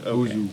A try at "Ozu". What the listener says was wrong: no S on the end. Not Ozu.